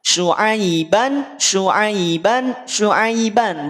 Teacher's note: Dibaca tanwin fathah, dibaca dibunyikan annya di saat tidak kita kaitkan dengan yang lain.